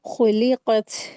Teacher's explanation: ता के ऊपर जब सुकून होता है तो उसकी ता की आवाज थ में बदल जाती है